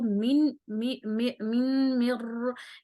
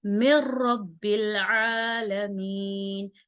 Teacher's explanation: ठीक है, मिर रब्बिल, मिर, ठीक है, मिर रब्बिल आलमीन, मिर बगैर गुन्ने के पढ़ेंगे। ठीक है, मीम को रॉ से मिलाएंगे बगैर गुन्ने के